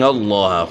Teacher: لفظ اللہ کا لام خوب موٹا کر کے اور منہ بھر کر پڑھیں گے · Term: لام موٹا